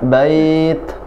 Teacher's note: nafasnya mengalir ya di ta